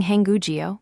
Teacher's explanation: The second block ends in a kb batchum and the third block starts with the silent circle. So the k slides over giving hangu meaning the Korean language.